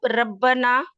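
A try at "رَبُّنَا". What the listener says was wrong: जी, इसके ऊपर पेश है, जो आपने रब्बाना पढ़ा है ना, उसका मीनिंग चेंज हो जाएगा।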